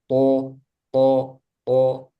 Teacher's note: huruf to yang paling tebal, yang paling kuat. To, to, to, karena dia coba apa saja yang dimiliki huruf to dari hamas jahar, termasuk hamas atau jahar.